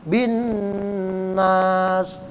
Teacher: Itu nun yang bertasdid itu ya. Harus dibaca berdengung. Harus dibaca gunnah.